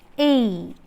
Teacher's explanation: So coming to articulation, during the articulation of this diphthong, the glide movement of the tongue begins in a position between front half close and half open. Front half close, this one, and half open, and moves in the direction of the RP E.